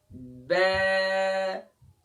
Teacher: اچھا آخر میں آواز روکنا نہیں ہے، ب، ب نہیں کرنا ہے، اسی طریقے سے ب نہیں، آواز جاری رہے آخر میں، ب، دونوں ہونٹوں کے گیلے حصے کو ملا کر سختی سے ادا کریں گے